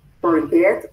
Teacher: el verbo forget tiene dos sílabas y la última sílaba es acentuada Es decir al pronunciarlo suena más fuerte